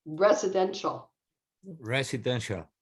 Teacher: this ti um in english often becomes an sh sound